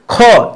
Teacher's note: मुंह पे हाथ रखिए थोड़ा सा दूर ख ज्यादा हवा निकल रही है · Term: महाप्राण